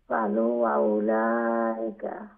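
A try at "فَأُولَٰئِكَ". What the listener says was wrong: আবার ফালু বলছেন, এটা তো বললাম যে লাম হবে নেক্সট লেটারের সাথে লাগাইল থাকলে, কানেক্ট থাকলে লাম হয়, আর খালি থাকে যদি আলিফ হয়, ফাউলাইকা, এটা উলা না লু।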